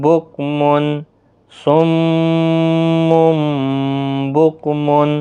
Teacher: پہلا میم مشدد ہے گنہ کے ساتھ پڑھا جائے گا، پھر قلب ہوگا